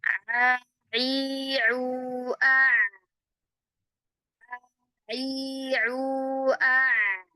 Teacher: Maka huruf ain ya ketika kita ucapkan a i u a i u a jadi masih ada masih ada aliran suara dia. Aliran suaranya berhentinya itu enggak lantas langsung berhenti tapi berangsur-angsur.